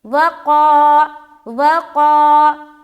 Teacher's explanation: وقالت اليہود، واو زبر وا، قاف الف زبر قا، وقا، واو کو جلد ادا کریں گے، قا کو لمبا کریں گے کیونکہ یہاں پر الف مدہ کا قاعدہ ہو رہا ہے